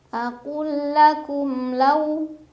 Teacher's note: ada huruf lin karena ada waw sukun sebelumnya fathah, dibacanya dilunakan